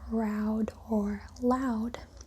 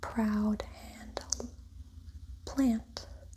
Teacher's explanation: In English, approximants become voiceless after voiceless stops.